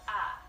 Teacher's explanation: the diphthong I becomes ah and it's not a lengthen ah like if you're a Mississippi